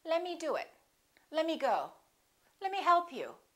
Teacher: Let me often becomes lemme. The T disappears.